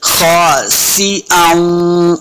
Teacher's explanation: खासिअन, सिन के नीचे जेर है, इसको सिन को पढ़ते हुए सीटी की आवाज आएगी।